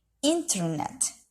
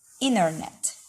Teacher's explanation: may say the word internet, with two plosive t sounds